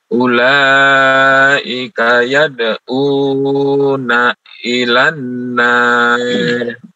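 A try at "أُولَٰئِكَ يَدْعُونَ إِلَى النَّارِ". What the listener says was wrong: Sekali lagi. Yad'una, jangan terlalu panjang.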